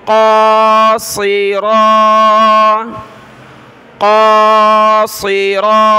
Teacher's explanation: قاف اور را دونوں کو ایک ایک الف کی مقدار اوپر کی طرف کھینچیں گے، دونوں پر یہ کھڑا زبر ہے۔ اور قاف، صاد، را تینوں کلرفل ہیں، تینوں کو موٹا کر کے پڑھنا ہے۔ قاصرا، قاصرا، یہ باریک تا کو آگے ملائیں گے بڑی طا کے ساتھ۔